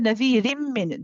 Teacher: instead of saying rin, we say rim. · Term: idgham kamil bi ghunna